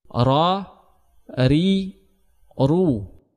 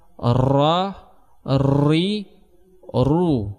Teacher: pengucapan huruf ra tidak boleh lebih daripada 2 getaran. Karena apabila lebih daripada 2 getaran, maka akan dihitung 2 huruf ra.